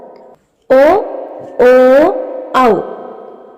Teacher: കണ്ഠവും ഓഷ്ടവും ഉപയോഗിക്കുന്നതുകൊണ്ട് ഇവയെ കണ്ഠോഷ്ട്യം എന്ന് പറയുന്നു